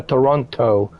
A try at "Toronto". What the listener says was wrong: Toronto. Yeah, so you take away the T and you change it to an N. Toronto.